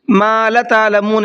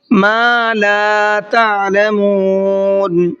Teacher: ما کو بھی کھینچنا ہے اور لا کو بھی کھینچنا ہے۔ اس میں اکثر لوگ غلطی یہ کرتے ہیں کہ ما کو تو کھینچتے ہیں لیکن لا کو نہیں کھینچتے ہیں، ما لا تعلمون اس طریقے سے پڑھتے ہیں۔